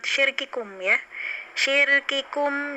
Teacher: Ya, dan peliharalah baik-baik sifat syiddah itu menahan suara ya, yang terdapat pada kaf dan ta. Jangan sampai hamas pada keduanya terlalu mendominasi sehingga menghilangkan sifat syiddah pada keduanya